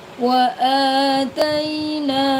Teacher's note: ada hamzah yang berharakat fathah panjang. Ingat dibaca panjang.